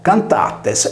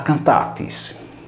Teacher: non vi è alcuna differenza, se non la chiusura della vocale /e/ in /i/ nella seconda persona plurale